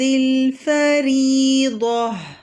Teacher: الفریضہ میں را ترقیق ہے، کسرہ ہے را کے نیچے، اور ضاد جو ہے وہ تفخیم ہے، تو ان دونوں کو فرق کر کے پڑھیں گے، ترقیق اور تفخیم پڑھیں گے.